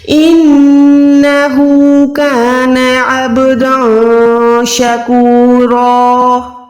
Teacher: Stop کر رہی ہوں تو 2 زبر کو ہم نے ایک زبر کر کے ادا کرنا ہے اور یہاں پر رو موٹی ہے.